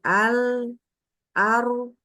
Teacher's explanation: kedua-dua nya tidak boleh dikeluarkan dengan ada hembusan nafas atau hembusan udara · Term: enggak ada hembus udara